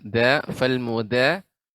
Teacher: Ya, da, fal muda. Di sini dal dengan punggung ujung lidah, tidak dengan ujung, tidak. Mudab, tapi muda, da.